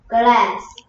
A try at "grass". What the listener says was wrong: 글래스가 아니고요. 글래스는 유리고요. 그래스죠. 글래스는 유리고요. 그래스는 grass죠. 그래스.